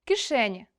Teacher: наближення и до е в ненаголошеному складі